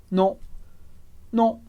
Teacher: a boca muito parecida do O, mas é um som nasal